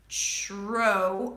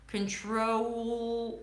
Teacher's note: Now see what happens to the T after, before an R, it becomes a ch sound. So the TR is actually a ch as in chicken, tro, O as in go, and then the dark L, control.